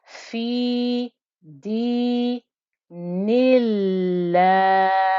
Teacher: You still have a 2 count stretch, you still have that hidden 2 count stretch, but the 2 count stretch will also be light because the lam with the shadda stays light · when you join to the word Allah with a kasra, which is what we're going to do here from the noon, then this lam stays light.